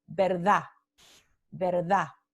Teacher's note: se pronuncia como un alófono oclusivo dental sordo